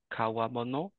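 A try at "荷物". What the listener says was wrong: It's nimotsu, but that does look like Kawa River, which is this kanji right here, and mono, of course, is how you can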